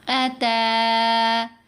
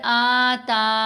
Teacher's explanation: اب یہاں پر آتا ایسے نہیں پڑھنا، یعنی حمزہ کو لمبا نہیں کرنا، صرف تا کی آواز کو لمبا کیا جائے گا